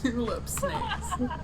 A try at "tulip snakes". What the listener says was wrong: You said that again, and it also sounded like two old snakes. You're not clarifying this. Tulip snakes?